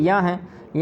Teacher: या तालु से भी उच्चारित होता है और नासिका से भी होता है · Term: अनुनासिक वर्ण